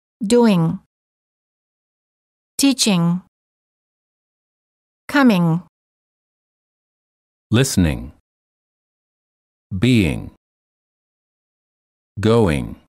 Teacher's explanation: don't release your tongue when you say the g or just release it slightly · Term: NG sound